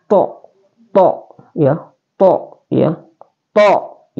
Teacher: Jadi cara penyebutan ta ini adalah tebal. To ya, to ya, to ya, dia seakan-akan full mulutnya to. Jadi caranya juga adalah tengah lidah ditempelkan ke langit-langit.